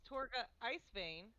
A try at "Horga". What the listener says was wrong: Hor, it's with an H. Horga.